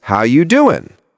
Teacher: Notice how he drops the G at the end.